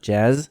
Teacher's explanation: the z of course is just a voice s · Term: voiced version